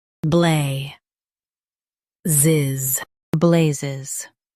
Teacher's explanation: Emphasize blay and keep ziz light.